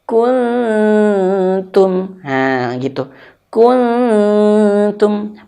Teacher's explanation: Maka ketika nun sukun jumpa ta, persiapan ke huruf ta. Lidah kita hampir menyentuh ke huruf ta.